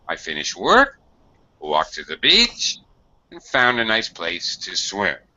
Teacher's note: I have to use listing intonation. I have to go up, up and down.